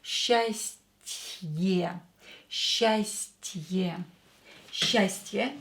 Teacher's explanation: we have мягкий знак here, so this te will be softer.